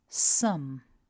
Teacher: we begin with the S sound then we have a short uh followed by m